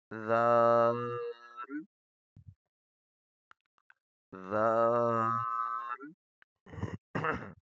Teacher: زبان کی نوک اوپر والے دانت کے کنارے پہ نرمی سے ٹچ ہوگی